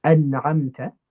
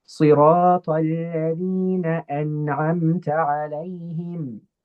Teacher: Now, in Izhar, we use the tongue part to make the N sound, An'amta, right? But we don't prolong it. So we don't use our nose to prolong the sound.